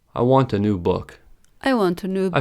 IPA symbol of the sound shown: ə